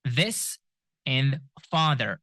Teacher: it is made by placing your tongue between your teeth and your chords or vocal cords vibrate